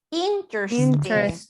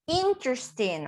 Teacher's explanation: the strongest intonation goes in the first syllable